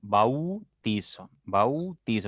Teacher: con la a se abre se abre un poquito la boca y con la u se cierra tu boca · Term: decreciente